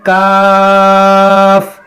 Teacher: इसको मोटा पढ़ना है। इसका मखरज है जबान की जड़ और तालू का नरम हिस्सा। जबान की जड़ जहां से जड़ जहां से जबान जहां से शुरू होती है वहां से यानी जड़।